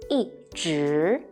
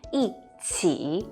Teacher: when 一 is followed by the three other tones, first tone, flat, second tone, rising, third tone, down and up, 一 becomes the fourth falling tone.